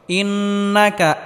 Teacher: গুন্নাহ করে পড়তে হবে অর্থাৎ গুন্নাকে গোপন করে পড়তে হবে